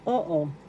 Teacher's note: The first syllable, O, is where the accent is.